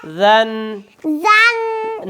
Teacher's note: سن سین سن سن سین سن سن سن سن سن ذا زا نرمی سے ذال زا ازال نہیں ذال زا ادھر ادھر زبان ادھر لگا کے ذال وال زبان باہر نہیں نکالنی سامنے والے دو دانتوں کے کنارے پر لگے